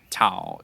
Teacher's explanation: some sort of blend between a T and a D sound